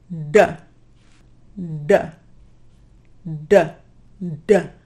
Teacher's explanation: Keeping that tension from the previous exercise, shape the tip of your tongue like a cup and lift it towards the palate. And when you say D, it should sound like this. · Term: Retroflex D